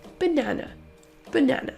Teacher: le premier et le dernier A se prononcent avec le son schwa